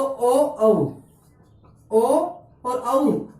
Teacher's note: ओ और औ अपने जो वर्ण होते हैं इनका उच्चारण स्थान क्या होता है, कंठोष्ठ होता है